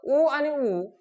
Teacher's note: ओठ आपले एकमेकांना चिपकल्यासारखे वाटतात जवळ आल्यासारखे वाटतात म्हणून ते ओवर्ण आहेत त्यानंतर आपल्याला काही जे व्यंजन आहेत त्या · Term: ओष्ट वर्ण